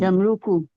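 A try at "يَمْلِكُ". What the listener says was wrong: Yamli. Stripnya kasroh. Malaka yamliku. maka wazannya fa'ala yaf'ilu. Malaka yamliku wazannya fa'ala yaf'ilu.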